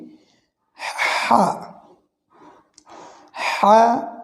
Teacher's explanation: বাংলায় হয়ে আকার দিলে যেটি হয় সেটি এটি উচ্চারণ হবে, কিন্তু জিমের সাদৃশ্য যেটি দেখছি আমরা, এটি উচ্চারণ হবে কণ্ঠনালীর মধ্যখান থেকে। হা, হা অর্থাৎ কণ্ঠ দিয়ে আগে বাতাসের শব্দ বের হবে, তারপরে এর উচ্চারণটা আসবে। · হা কণ্ঠনালীর মধ্যখান থেকে উচ্চারণ হয়